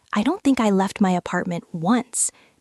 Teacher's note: Notice how emphasizes the word once at the end.